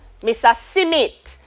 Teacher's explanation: we have inserted a vowel between the s and the m